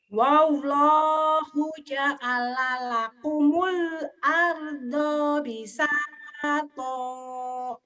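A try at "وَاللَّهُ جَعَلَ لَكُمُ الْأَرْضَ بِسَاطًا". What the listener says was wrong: Tadi di do-nya kepanjangan, di kom-nya kepanjangan. Nih udah bagus tapi itu. Wallahu ja'ala lakumul arda bisato.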